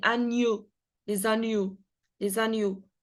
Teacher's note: it is a nasal sound because when you pronounce it, you can actually feel it here from your nose